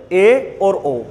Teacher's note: लगभग मुख हमारा आधा बंद रहे तो उसको बोलते हैं बेटा अर्ध संवृत स्वर